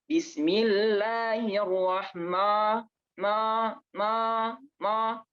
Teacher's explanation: ma itu tidak termasuk isti'la. Maka jangan ditebalkan. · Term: huruf istifal